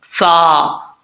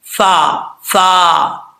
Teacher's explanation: فا کا مخرج کئی دفعہ آپ کو بتا چکا ہوں، پھر بتا دیتا ہوں. اوپر والے جو دو دانت ہیں ان کا کنارہ نیچے والے ہونٹ کی تری والی جگہ پہ لگے گا، یہ فا پڑھا جائے گا